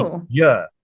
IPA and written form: ɪur (here)